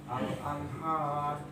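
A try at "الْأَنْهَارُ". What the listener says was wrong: Al-anha langsung. Ha lebih rileks. Kalau ini terlalu ada tenaga, akhirnya kayak ha. Anha. Nah, demikian.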